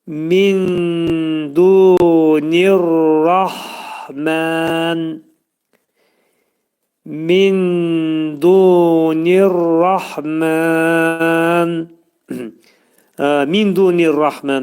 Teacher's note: Yəni sükunlu ləm hərfi dəydi ra hərfinə yetişdi və idğam oldu. Ona görə üstündən sükun götürüldü. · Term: idğam-ı şəmsiyə